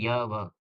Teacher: इसके बोलने से मुख द्वार बहुत सकरा हो जाता है और हवा स्वर की भांति बीच से निकल जाती है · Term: अर्ध स्वर